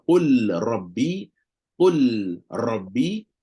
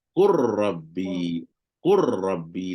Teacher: Tak ada dah lam habis. Masuk dalam ra dah. Qur. Bagi bunyi, terus bagi bunyi takrir tu. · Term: idgham